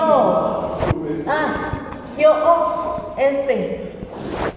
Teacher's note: Yo, ahí viene el sonido glotal.